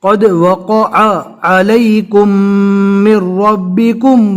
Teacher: دونوں عین ہیں، دونوں کو حلق سے اچھے سے ادا کرنا ہے